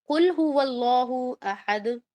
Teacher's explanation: اب لام پر کیونکہ سکون ہے تو اس کی کوئی اپنی آواز ہی نہیں ہے، نہ وہ لا ہے، نہ لی ہے، نہ لو ہے، کچھ بھی نہیں ہے، کچھ بھی نہیں ہے. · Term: لام ساکن